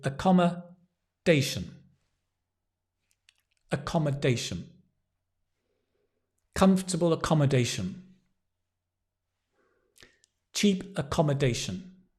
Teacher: Accommodation, stress on the dation.